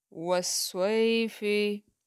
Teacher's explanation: जो या मद्दा होता है वो एक अलिफ के बराबर उसे हम लंबा करते हैं, लेकिन जब जो या लीन होता है उसको एक अलिफ से हम कम कम लंबा करते हैं, खींचते हैं, ड्रैग करते हैं।